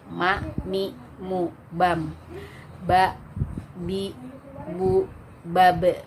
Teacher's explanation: Kemudian yang dirapatkan 2 bibirnya yaitu huruf ma ya, ma sama ba.